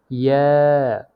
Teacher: জিহ্বার মধ্যখান তার বরাবর উপরের তালুর সঙ্গে লাগিয়ে উচ্চারিত হয় ইয়া